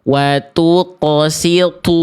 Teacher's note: walaupun dia sudah tebal tapi masih ada rasa-rasa huruf t-nya